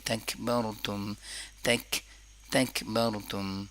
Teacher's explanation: زبان کا درمیانی حصہ جب اوپر سخت تالو کے ساتھ ٹچ ہوتا ہے تو کیف ادا ہوتا ہے. زیادہ تر لوگ قوف سیکھتے ہیں تو پھر یہاں پر بھی تکبرتم پڑھتے ہیں نا، تو تکبرتم، تکبرتم. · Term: کاف کی آواز